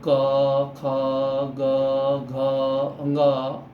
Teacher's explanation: कंठ से हम जैसे क ख ग घ अंग, ये कंठ से आवाज आ रही है। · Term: कंठ वर्ण